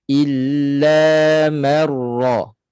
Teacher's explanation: Sebab ra bersabdu, ra musyaddadah, berbaris atas. Jadi bila ra itu bersabdu, dia terus tebal. Bila ra itu bersabdu, baris atas, ataupun ra bersabdu, baris depan, terus tebal.